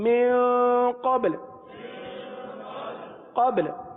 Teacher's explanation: با پر قلقلہ کریں اور لام کو ساکن کر دیں